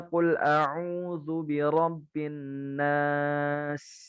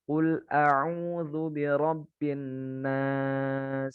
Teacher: Binnas suaranya dialirkan, desisnya dikeluarkan. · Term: sofir